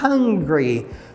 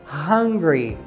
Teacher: o som do H no inglês, ele é pronunciado, não é um som mudo como no português. Então, se fala como se tivesse um som de um R do português